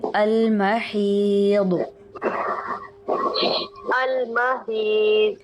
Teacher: ضاد کو پر کریں گے، ہا کو باریک رکھیں گے